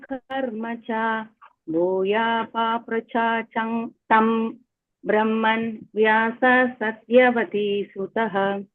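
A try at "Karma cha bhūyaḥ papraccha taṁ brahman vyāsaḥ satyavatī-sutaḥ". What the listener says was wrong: Nice. Very nice.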